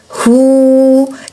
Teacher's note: bisa tertukar huruf yamahuna hu ya haknya tenggorokan kita paling bawah keluarkan napas dan suara dari tenggorokan bawah bunyinya u Suara u di ujung bibir hu jangan Ho kalau